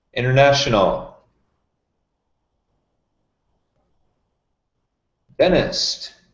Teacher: As you can see, I'm reducing the NT.